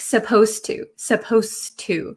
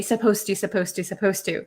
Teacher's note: the D sound and the T sound become kind of like one sound so when I speak supposed to supposed to it doesn't sound